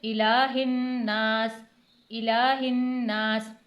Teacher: حمزہ زیر ای کو جلدی پڑھنا ہے، لام کھڑی زبر لا، کھڑی حرکت ایک حرکت کے برابر، یعنی تھوڑا سا کھینچ کے پڑھی جاتی ہے